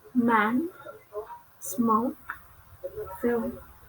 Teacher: Next is English consonant M. It belongs to bilabial and nasal.